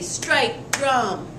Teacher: has two stressed syllables back to back